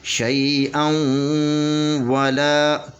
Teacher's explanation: نون تنوین کے بعد واو ہے، تو یہاں پہ ادغام حقیقی مع الغنہ ہوگا، 2 حرکت کے برابر غنہ کریں گے، اور یہ اس کو حمزہ کو واو کے ساتھ ملا کر پڑھیں گے، تو حمزہ 2 زبر با اون ہوگا، حمزہ 2 زبر با اون، شیئا ولا۔